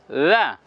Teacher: জিহ্বার আগা এবং সামনের দুই দাঁতের আগার সঙ্গে নরম করে লাগিয়ে বলবো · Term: জাল